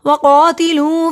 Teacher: قاف دو نقطوں والا موٹا پڑھا جاتا ہے ، قاف کو لمبا کیا، الف سے پہلے زبر ہے، حروف